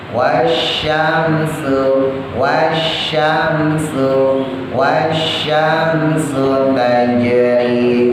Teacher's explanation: Shin tebal ujung lidah taruh di atas di langit-langit yang keras.